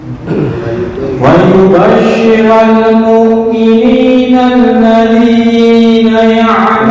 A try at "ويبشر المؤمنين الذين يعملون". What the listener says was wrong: Ini kepanjangan. Nah, hanya 2 harokat. Syira. Jangan syira. Syira.